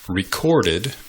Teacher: you pronounce the verb by emphasizing the second syllable